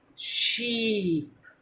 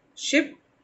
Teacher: दोनों ई साउंड है, एक को हम खींच रहे हैं और दूसरे को नहीं खींच रहे